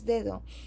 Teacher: in Spanish, for example, there is a negative VOT, which is inexistent in English.